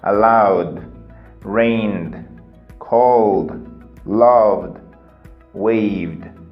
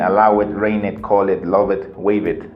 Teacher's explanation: you see the sound it's a voiced sound it comes from your throat